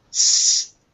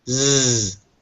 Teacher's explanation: you can feel when you make them that one your throat will be still s and the other your throat will vibrate Z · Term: voicing